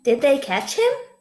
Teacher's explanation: try saying that with your voice going up at the end